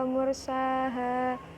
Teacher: wa mursaha, ro-nya itu ro tafhim dibaca tebal